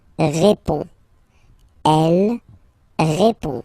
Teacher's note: final D is not pronounced. You only have this on nasal sound at the end.